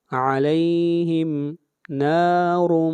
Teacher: را کو موٹا پڑھیں گے اور یہاں پر ادغام مع الغنہ ہو رہا ہے